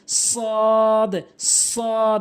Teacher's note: জিহ্বার আগাটে নিয়ে উপরের নিচে দুইটি দাঁতের আগাতে লাগাবেন